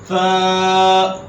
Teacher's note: فا جو تھا اس کی سیٹی نہیں بجنی چاہیے، یہ بات آپ ذہن میں رکھنی ہے.